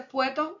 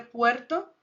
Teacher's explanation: la omisión de fonema que cierra una sílaba